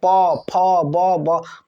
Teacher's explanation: उन सबको बोलने में आपके जो होठ है वो टच होगा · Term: ओष्ठव